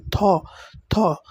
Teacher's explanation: আমাদের দাঁতের নিচের শুরুর দিক থেকে থ উচ্চারণ হয় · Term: অগ্রদন্তমূলীয় বর্ণ